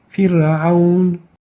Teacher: We didn't say Fir'aun, but we had the ra with attenuation. Fir'aun. And the reason for that is that the ayn is a depressed letter, which automatically makes it an attenuation letter, leading the ra with sukoon before it to become attenuated.